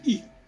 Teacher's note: on n'a pas à prononcer le L final. On ne doit pas dire il, on doit dire i.